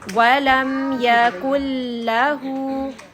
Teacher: اس میں نون کی بالکل واز نہیں ہے یہ نوز کے اندر نہیں جائے گا سو دس از ادغام without غنہ غنہ کے بغیر ہم ادغام